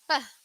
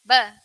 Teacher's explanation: there's no puff of air coming throughout your mouth